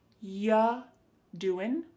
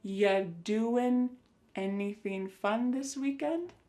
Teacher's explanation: Ya, the word you is reduced to ya.